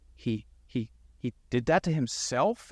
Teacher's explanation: It was a clunky delivery, and it went up at the end. It's called uptalk, which means that the statement's a question.